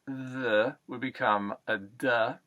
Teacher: to e is a very good uh principle to live by the uh th sound typically would be replaced with a t or a d